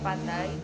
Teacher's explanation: terdapat perubahan warna bunyi dari huruf a ke semivokal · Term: diftong